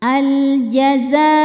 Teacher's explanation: Kemudian bertemu dengan hamzah yang a ada pada kata aljazaa. Maka huruf zainya panjang boleh empat boleh lima harakat.